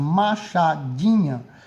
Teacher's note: a gente percebe que se pronuncia com mais força o di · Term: sílaba tônica